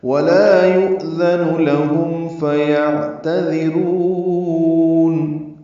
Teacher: ولا لا الف مدہ، یؤذن حمزہ ساکن جھٹکے سے ادا ہوگا